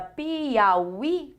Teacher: quando eu pronuncio a palavra Piauí, qual é a sílaba mais forte? É o i. Então, por isso, Piauí é uma palavra oxítona.